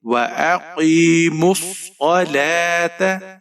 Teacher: وَأَقِيمُوا الصَّلَاةَ، صاد کو موٹا پڑھیں گے، صاد کے اوپر زبر ہے، بغیر کھینچے پڑھیں گے۔ لام کے اوپر کھڑی زبر ہے، ایک الف کی مقدار تک کھینچ کر پڑھیں گے۔ تا کے اوپر زبر ہے، بغیر کھینچے پڑھیں گے۔ · وَأَقِي، میم کے اوپر پیش ہے، صاد موٹا پڑھیں گے، صاد کے اوپر تشدید ہے، یعنی صاد مشدد ہے، میم کو صاد کے ساتھ ملائیں گے